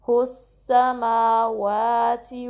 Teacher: यूज़ करेंगे वसतुल लिसान, या के मखरज के लिए, कुर्सीयुहु, होंठों को सही गोल करेंगे, फिर हा को सीन से मिलाएंगे और सीटी वाज़े करेंगे